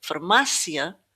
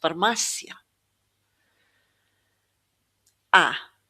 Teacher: a slightly longer, more open vowel sound than the surrounding vowels. So, if we listen to the word farmácia, we can hear that first A is kind of not as sharp as this A here. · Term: acute accent